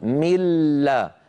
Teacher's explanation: النون تحولت بجزئيها الى لام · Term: ادغام كامل